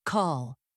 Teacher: The tongue touches near the roof, but the back of the tongue lifts as well, creating that darker quality. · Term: dark L